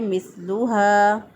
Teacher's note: التی لم یخلق مثلها فی البلاد، مثلها، سا کی ادائیگی میں سیٹی کی آواز نہیں آنی چاہیے، اس کو پڑھیں گے مثلها، ہا زبر الف ہا، الف مدہ ہے، ایک الف کے برابر لمبا کریں گے، ہا کو اقصی حالت سے ادا کریں گے، یعنی گلے کا وہ حصہ جو سینے کی طرف ہوتا ہے وہاں سے ہا ادا کیا۔